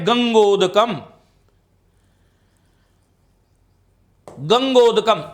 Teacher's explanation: ऊ का उच्चारण स्थान क्या है, ओष्ठ है। तो आ और ऊ के स्थान पर कोई ऐसा वर्ण बनना चाहिएगा जिसका उच्चारण स्थान कंठ और ओष्ठ दोनों हो।